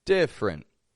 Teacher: spelled with three syllables but we drop that one e in the middle just two quick syllables